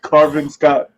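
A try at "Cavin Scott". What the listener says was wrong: Carvin? no R.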